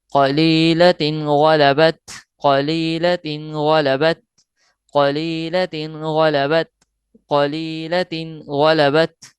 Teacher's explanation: تنوین کے فوراً بعد جو ہے وہ حروف حلقیہ میں سے ایک حرف غین آ رہا ہے تو لہٰذا یہاں اظہار کر کے پڑھیں گے